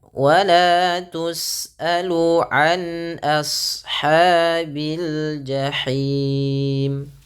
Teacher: an di sini bacaan izhar, jelas suara an-nya, tapi ini bedakan antara ain dengan hamzah.